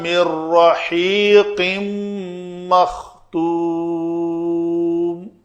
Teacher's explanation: بلا غنہ کا مطلب ہے یہاں پہ ٹائم نہیں دینا، تو مر رحی نون بل پڑھنے میں نہیں آئے گی۔ آگے رحیقن تھا، آگے میم آ گئی ہے تو اس کا ادغام ہوگا اس میم کے اندر، تو پھر ما غنہ ہوگا۔